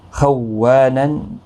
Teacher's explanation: اگر آپ نرمی کے ساتھ پڑھیں گے خونن تو تشدید نہیں پڑھی جائے گی۔ خوانن، و الف مدہ ہے، ایک الف کی مقدار کے برابر کھینچ کر پڑھیں گے۔